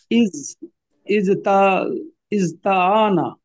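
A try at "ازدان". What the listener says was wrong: না ইজ তানা। এই তাটা এখন দাল হয়ে যাবে তাহলে।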